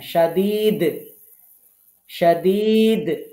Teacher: দালে একটু শক্ত করে কলকলা করবেন